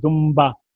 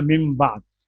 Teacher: لکھا ہوتا ہے دنبا تو بولتے ہیں دمبا